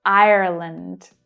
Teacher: Notice that I don't pronounce that R there, but Irish English speakers will. They will pronounce Ireland. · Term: Irish accent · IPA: /r/